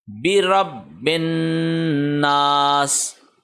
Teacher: یہ برب، یہاں پہ ہم رکے تھوڑا، اس کو پریس کیا ہم نے، برب الناس، ہم نے ایسے نہیں کیا برب الناس، ایسے نہیں ہوگا، برب الناس، اور یہ بے نہیں ہے بی ہے، مجہول نہیں کرنا اس کو، بی ہے، بازیر بی ہے، برب الناس۔